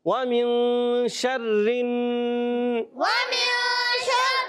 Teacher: را باریک رکھنی ہے